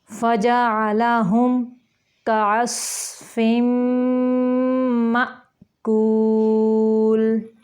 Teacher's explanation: کاف باریک ہے، صاد موٹا ہے اور میم پہ ادغام ہو رہا ہے تو یہ الف ہے، اس کے اوپر ساکن ہے الف، تو یہاں پہ یہ حمزہ بن گیا تو اس کو جھٹکے سے ما نہیں کریں گے، مأکول۔